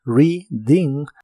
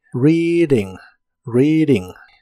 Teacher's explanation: la d de Reading la puedes pronunciar como d Reading o en inglés americano se pronuncia como r